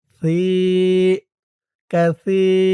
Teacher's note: সার উচ্চারণটা নরম হবে। জিহ্বার মাথা উপরের দাঁতের মাথার সাথে লাগবে।